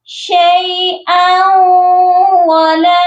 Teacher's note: شیئا، یہاں پر جو حمزہ کے اوپر تنوین ہے، اس کو ہم جب واو مشدد کے ساتھ ملائیں گے تو ادغام بھی کریں گے اور غنہ بھی کریں گے